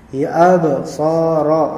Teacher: Ba'nya juga, ba'nya di kolkola ya, ya absara, ra'nya di tafkhim, ditebalkan